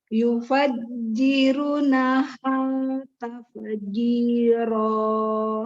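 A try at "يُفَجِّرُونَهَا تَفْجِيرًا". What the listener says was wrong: Ada dua ya. Runya kurang, harusnya panjang 2 harokat. Taf, harusnya fa-nya keluar udara, ini enggak. Taf, jangan ditutup bibirnya. Taf, taf, ya taf. Nah, taf. Jadi yang kena itu gigi ketemu bibir bawah. Taf, jiro. Ro-nya panjangnya sama jimnya sama.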